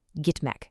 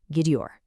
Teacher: For a very small group of common verbs that end in T, that T sound softens into a D before you add the ior suffix. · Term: consonant softening